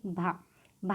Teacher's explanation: स्पर्श घोष है, महाप्राण है और ओष्ठ व्यंजन ध्वनि है